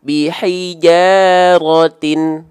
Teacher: ujung lidah disentuhkan dengan pangkal gigi seri atas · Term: huruf ta